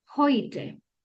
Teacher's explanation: cuando esa palabra está comenzando con la H, entonces suena como una J. Por ejemplo, esta palabra cumple la regla de que eh la primera letra es la H, entonces suena como una J.